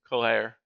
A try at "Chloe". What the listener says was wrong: You actually need to almost pretend like the R isn't there. It's like Chloe.